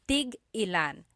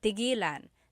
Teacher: when there's a hyphen in it, you have to have that glottal stop.